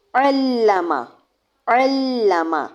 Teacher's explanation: عین کو لام کے ساتھ شدت کے ساتھ ملایا، پھر لام کی زبر پڑی اور اس کو لمبا نہیں کرنا